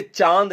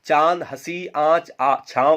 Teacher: इसके उच्चारण में वायु नाक और मुख से वायु एक साथ बाहर निकलती है। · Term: अनुनासिक